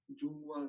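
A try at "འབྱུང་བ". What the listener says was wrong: Bravo, surgir, impeccable.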